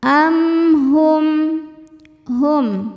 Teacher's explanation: Karena mim sukun menghadapi huruf yang bukan mim atau ba, maka mim sukun dibaca dengan jelas. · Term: izhar syafawi